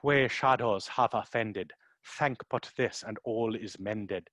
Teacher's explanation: So you have a process where the vowels are still very open and very far back in your mouth. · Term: original pronunciation